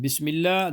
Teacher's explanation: In Bismillah, the first ha is bottom of throat. Second and third, they are ha, sharp sound, middle of throat.